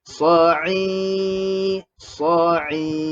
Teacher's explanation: Jadi sa kena buka mulut lah. Dan huruf ain yang berbaris bawah kena baca i, kena senyumkan mulut. Dan bacaan panjang 2 harakat.